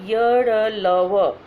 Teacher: अंतस्थ मतलब अंतः स्थित, मतलब हमारे तालु के ऊपरी भाग से जब हम इसका उच्चारण करते हैं तो हमारे तालु के ऊपरी भाग से इसकी आवाज़ आती है, इसलिए य र ल व को हम अंतस्थ व्यंजन कहते हैं।